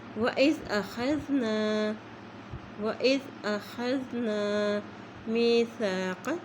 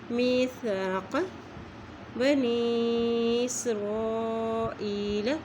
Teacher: قاف دو نقطہ والا جو قاف ہے اسے موٹا ادا کیا جاتا ہے